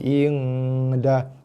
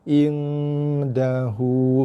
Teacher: Kita punya dengung ikhfa ni, ing dah. Mesti keluar kat hidung dengung dia tu